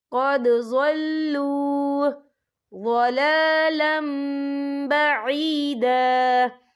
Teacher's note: یہاں دال ساکن ہے تو یہاں پر کلکلہ ہوگا